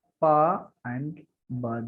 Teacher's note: These two letters are bilabial. Bilabial means touching two lips.